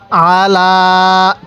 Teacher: আইনটা উচ্চারণের সময় গলার মধ্যে চাপ দিব তাহলে আইনটা সহি উচ্চারণ হবে